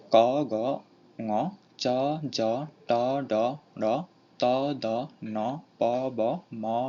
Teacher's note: এগুলো অল্প প্রাণ হওয়ার কারণ হচ্ছে এদের বায়ু প্রবাহীর বেগ কম